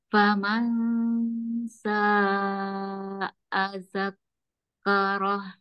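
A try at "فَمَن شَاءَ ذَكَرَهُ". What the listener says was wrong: Kafnya nggak ada tas ya, jadi jangan ditahan. Zakaro, tapi satu-satu itu ya.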